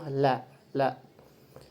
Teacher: Huruf lam dalam makhrajnya termasuk laswi, janibi. Laswi itu adalah gusi, lafi janibi itu yang di pinggir. Dan kemudian dalam tareqatul khurujil hawa keluarnya angin ketika diucapkan dia termasuk mutawasit.